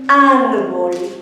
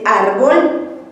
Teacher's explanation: O sea que vamos a pronunciar árbol. ¿Ven cómo es más fuerte al principio y más bajo al final?